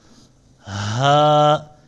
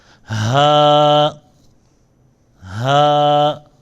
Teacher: اس ہا کو ادا کرتے وقت جو ہے چھاتی سے یہ ادا ہوتا ہے